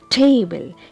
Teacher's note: Here I am giving you stress on the first syllable